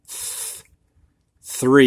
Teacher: TH unvoiced. 3, it's just a breath of air.